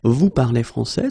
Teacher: So of course, l'Académie Française would like me to put them in the other order, but basically you will hear many French people and many French-speaking people just keep the same order and raise their voice at the end.